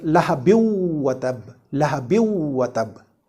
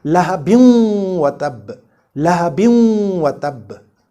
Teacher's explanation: And when any of these four letters follows a noon saakin or tanween immediately, that noon saakin is assimilated into this next letter with nasalization · We merge the noon saakin into waw with a gunna. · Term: idgham with gunna